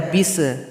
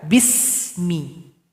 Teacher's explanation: di sini ada huruf Sin jangan dipantulkan